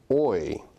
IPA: ɔɪ